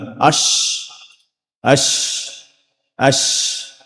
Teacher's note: So the middle part of the tongue is raised, but it doesn't make contact with the hard palate.